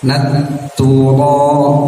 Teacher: ro itu bukan ujung lidah yang menempel ke langit-langitnya, tapi agak ditekuk sedikit, dicondongkan sehingga yang menempelnya punggung lidah, sehingga terdengar agak cadel ya.